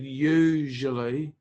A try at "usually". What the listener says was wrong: that second sound is like j, but I think you're saying it like z. So you're saying like usually, but usually. Just try that usually.